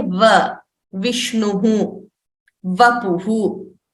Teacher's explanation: The teeth are touching the lips, the lower lip. So vakarasya, we are using both the lips and the teeth. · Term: dantoshtham